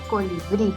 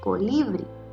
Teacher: identificamos la mayor fuerza de voz en la sílaba bri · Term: sílaba tónica